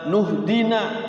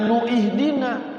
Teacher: Ihtada ini asalnya tadinya waman ihtada diwasal, waman ihtada namanya hamzah wasal ya, jadi hamzah wasal, hamzahnya tidak dihidupkan